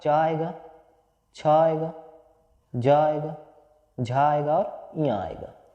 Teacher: ये आपके उच्चारित होते हैं तालु से, मतलब तालव्य से